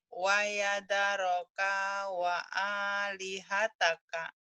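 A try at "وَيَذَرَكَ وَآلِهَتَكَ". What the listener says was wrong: Kenapa kanya panjang? Ayo. Ya ada yang panjang, panjangnya cuma A-nya doang.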